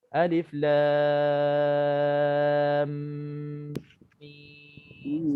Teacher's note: Antara alif lam mim kan, alif lam mim, kadang-kadang kita lam tu 6 harakat, mim 6 harakat. Antara lam dengan mim tu ada 2 harakat di situ dengung. Kita tak dengungkan.